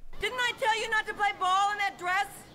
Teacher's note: Didn't I tell you not to play ball in that dress? Again, it's a question, so her voice is going up in pitch at the end of it. The stressed words are didn't, tell, not and play are stressed, but less than other stressed words.